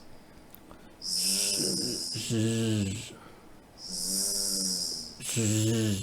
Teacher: And it's voiced, so it buzzes through your throat. You might want to put your hand just on your larynx. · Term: Z sound